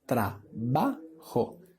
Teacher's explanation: la palabra trabajo, la sílaba tónica es la segunda sílaba